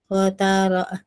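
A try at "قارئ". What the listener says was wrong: Qari'i, hamzah bukan ain.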